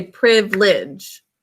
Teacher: we a lot of times kind of shorten it from three syllables to two